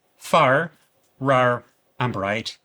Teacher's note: Northern Irish accents are rhotic, meaning that the R is pronounced clearly in all positions, whether at the beginning, the middle, or the end. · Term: Rhotic R sound